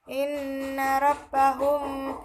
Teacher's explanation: Inna terdapat hukum bacaan gunnah karena ada nun yang bertasydid sehingga cara membacanya harus ditekan atau didengungkan